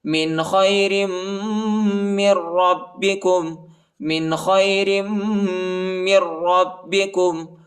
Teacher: را کو با کے ساتھ ملائیں گے، شدت کے ساتھ سختی کے ساتھ پڑھیں گے